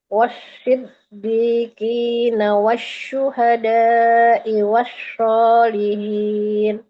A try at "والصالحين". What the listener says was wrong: Wassa, jangan wasya. Wassa, wassalihin.